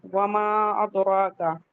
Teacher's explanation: دال پہ قلقلہ کریں گے اور را کو ہیوی پڑھیں گے اور اس پہ فتح مستقیمہ ہے، مد حکمی 2 کاؤنٹ.